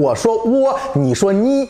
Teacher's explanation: 首先你要把普通话的上声，也就是第三声啊，变成一声